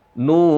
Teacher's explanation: Bunyi nu panjang selama dua ketukan